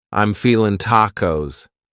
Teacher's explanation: You might say, I'm feeling, cutting off that G.